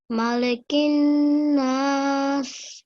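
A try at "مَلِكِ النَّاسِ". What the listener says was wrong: Good. So you hold, you make your guna sound, and then you elongate for 2 seconds here. Well done.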